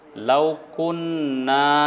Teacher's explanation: টান হবে লাউকুন্না এখানে একটু ধরতে হবে নুনে তাসদিদ আছে অর্থাৎ একটু সময় ধরে নাকের ভিতরে আওয়াজ নিয়ে তারপরে না একটু টান দিতে হবে